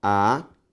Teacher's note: Sílaba tônica, antepenúltima, proparoxítona